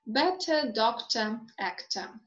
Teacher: the cluster of letters er or or in unstressed syllables is reduced to schwa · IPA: /ə/